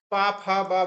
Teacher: पा फा बा भा ये ओष्ठ हैं, इनको केवल ओठ की ही जरूरत होती है